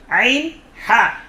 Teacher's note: কণ্ঠনালীর মধ্যখান থেকে, হলকের মধ্যখান থেকে 2টি হরফ উচ্চারিত হয়, আইন হা।